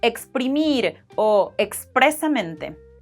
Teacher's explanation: We get the English X sound in las palabras que empiezan con X seguidas del grupo PR